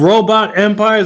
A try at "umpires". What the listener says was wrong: You say robot empires or umpires? I think you said empires. I think you said empires there.